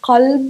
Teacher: we're pronouncing it from the back of the throat